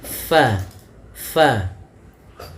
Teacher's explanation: Bibir kita rapat, padahal huruf fa ada sedikit furjahnya, ada sedikit ruang yang kosong yang mana untuk mengeluarkan nafasnya · huruf fa salah satu sifatnya yaitu dia hams, mengalirnya nafas